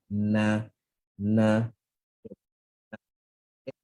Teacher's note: Kemudian kita ada lam, kita kan IV kan lam dulu, dan kemudian kita ada nun, nun baris atas. Nun baris atas, ingat makhraj, hujung lidah ke langit-langit atas.